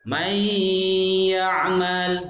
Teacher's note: nunnya dengung, nunnya masuk ke ya dan didengungkan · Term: Idgham bi gunnah